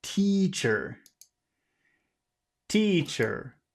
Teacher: we'll put the emphasis on the first syllable